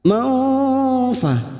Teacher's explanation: fathah tanwin bertemu fa, ikfa hakiki. Kita samarkan mendengung selama 2 atau 3 harokat. Maufa, ini juga yang disebut dengan ikfa ausat.